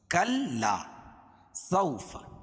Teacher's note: واو ساکن سے پہلے زبر ہو تو واولین اس کو نرم آواز کے ساتھ جلدی پڑھیں گے